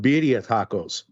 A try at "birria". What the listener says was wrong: you got to roll your R a little bit more.